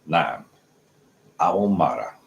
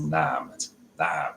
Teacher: we got that ein sound in Naam. So it's a glottal stop, but it's really, I'll explain it in another video, but it's not just Naam, it's Naam.